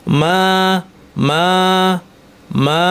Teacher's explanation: আস্তে আস্তে আওয়াজটা বাতাসে মিলিয়ে যাবে, মা, এক আলিফ, বেশি না